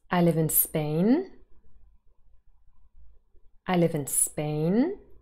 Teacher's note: there is a rising intonation at the end of this statement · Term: high rising terminal